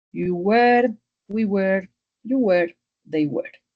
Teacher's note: Entonces es were un poco más redondo en la pronunciación